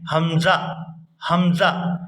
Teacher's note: حمزہ کو کبھی بھی اس طرح سے ادا نہیں کیا جاتا، حمزہ اس طرح سے کبھی بھی ادا نہیں کرتے، بلکہ جب اس کو ادا کرتے ہیں حلق سے، اس کو پڑھتے ہیں حمزہ حمزہ، یعنی اپنی آواز کو یکدم سے روک دیتے ہیں · جب ہم حلق کے نچلے حصے سے حمزہ کو ادا کرتے ہیں تو اس کو پڑھتے ہیں حمزہ حمزہ، یعنی آواز کو، اپنی سانس کو کاٹ دیا جاتا ہے، اس لیے اس کو حمزہ قطعی کہا جاتا ہے۔